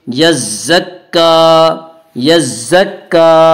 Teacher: تشدید کے بعد تشدید ہے، اس لیے تشدید والے حرف کو ایک دوسرے سے ملا کر پڑھیں گے یزک، کاف کھڑا زبر کا، کاف کے اوپر کھڑا زبر ہے، کھڑا زبر برابر ہے الف مدہ کے، اس لیے کھڑا زبر کو ایک الف کے برابر کھینچ کر پڑھیں گے